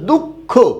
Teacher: প্রথমটা অল্পপ্রাণ হবে আর পরেরটা মহাপ্রাণ হবে